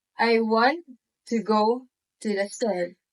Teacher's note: Here we stress the important words want, go, and store, while the words to and the are spoken faster and softer. If we're trying clapping with it, we naturally clap on the stressed words, creating a steady rhythm.